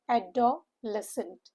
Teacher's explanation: The stress is on the third syllable and the syllables here are four.